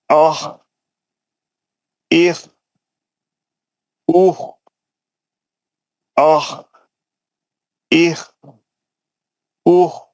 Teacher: میرا آواز اوپر کے حلق سے نکل رہا، اور موٹا پڑھ رہا ہوں میں، اور میں کھردرا پڑھ رہا ہوں